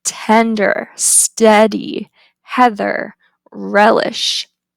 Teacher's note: the tongue height is low mid front it's unrounded and it is a LAX vow next we have Ash it's